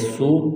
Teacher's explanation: ورا سین واو پیش سو، سین میں سیٹی کی آواز پیدا کریں گے۔ واو ساکن سے پہلے پیش ہے، حروف مدہ واو ہے، ایک الف کے برابر اس کو کھینچنا ہے۔